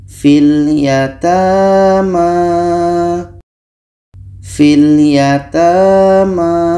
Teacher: Huruf 'i' dibaca pendek karena terhubung dengan huruf sukun.